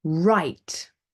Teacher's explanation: we don't pronounce the e but we're making the I very long vowel sound